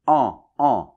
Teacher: Et AN avec la nasale [ɑ̃], un peu comme un A, mais c’est plus nasal ici. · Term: la nasale en